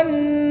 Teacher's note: نون مشدد میں غنہ کر کے پڑھیں گے